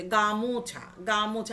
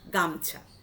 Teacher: গ যুক্ত আ যুক্ত ময় হসন্ত যুক্ত ছ যুক্ত আ, ময়ের সঙ্গে ওকারটা যে ছিল সেই ওকারটা লুপ্ত হয়ে গেল।